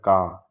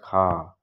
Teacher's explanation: अघोष महा अल्प्राण में आता है का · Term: अघोष अल्प प्राण